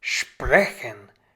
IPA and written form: ˈʃpʁɛçən (sprechen)